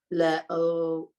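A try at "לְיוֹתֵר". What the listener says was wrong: le. I want to hear the yud. No, I'm not hearing the yud. I want to hear that yud. Le, yoter.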